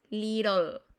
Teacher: La T y la doble T es como si se convirtieran en una R.